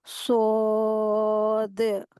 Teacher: सौद को अदा करते वक्त लास्ट में थोड़ा सा दाल के ऊपर कलकला के जैसी साउंड होंगी। दाल के ऊपर बाउंस होंगी वॉइस।